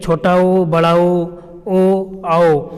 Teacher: इनको आप बोल के देखेंगे तो जो ओठ का जो आकार होता है ये गोल हो जाता है, मतलब वृत्ताकार हो जाता है।